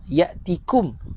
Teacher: Ya'tikum, nipis kaf, bukan qaf.